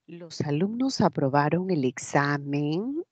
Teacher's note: deja de ser una inflexión hacia abajo descendente y se convierte en ascendente la primera sería una oración enunciativa y la segunda una interrogativa